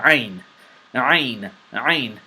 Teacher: This is a throat letter, and it's specifically pronounced from deep part of your throat, and the warm-up that will help you pronounce this letter is the gargle and spit warm-up.